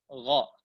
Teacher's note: dia di ujung tenggorokan bersama dengan kha.